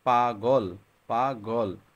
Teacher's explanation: দেখবা এই গ টা আমাদের কণ্ঠ থেকে বের হয়ে আসছে